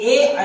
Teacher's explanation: इसी प्रकार आपके ए अय जो हैं वो तालु और कंठ से बोले जाते हैं। तालु और कंठ से, तो इनको कंठ तालव्य से कहते हैं।